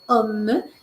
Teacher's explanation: Et dans le cas de homme, ce n'est pas on, c'est homme. C'est un O ouvert et on prononce le M.